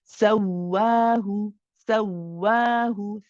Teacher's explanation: You grab the waw, saw, but then you don't stop the sound. You don't say so and stop, right? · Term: waw mushaddad